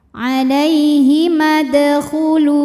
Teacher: yang sukunnya ini sukun asli dan ada di tengah bacaan maka dibacanya dipantulkan dengan pantulan yang kecil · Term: Qalqalah Sugra